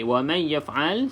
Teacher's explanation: nun kosong selepasnya bukan lam ataupun ra, maka didengungkan 2 harakat